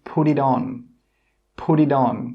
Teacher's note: The 'put', the 'it' and the 'on' all come together and we say 'Pudidon'. Pudidon. It's just one sound. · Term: link sounds